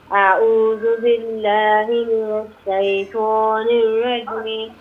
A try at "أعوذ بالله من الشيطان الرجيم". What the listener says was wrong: আইনার উচ্চারণ আরেকটু ট্রাই করবা, মিডল অফ দ্য থ্রোট থেকে প্রনাউন্সিয়েশন হইব আইনার উচ্চারণ।